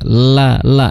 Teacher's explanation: la itu makhrajnya adalah di ujung lidah ya. Ujung lidah bertemu dengan gusi. La la ya seperti lamnya Indonesia.